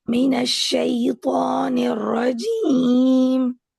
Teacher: جو آپ کا جیم ہے نا اس میں تھوڑا سا زی ساؤنڈ ہے، یعنی زیڈ زیڈ کی آواز ہے، الفابیٹ زی جو ہے نا اس کی آواز.